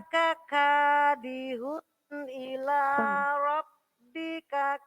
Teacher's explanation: Nah, K-nya tadi kepanjangan, hati-hati. K yang pertama pendek, K yang kedua panjang.